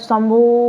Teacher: शंभू ऐसा कुछ बुलाओगे तो उसमें भी तीन से अधिक मात्रा का समय लग गया